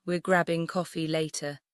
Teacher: Stress, grabbing, and coffee